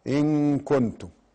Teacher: إن كنتم إخفاء حقيقي، نون ساكنة جاء بعدها الكاف. كنتم، كنتم نفسها فيها حكم، فيها إخفاء حقيقي لأنه نون وجاء بعدها التاء.